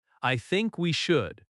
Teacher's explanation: Stress think and should.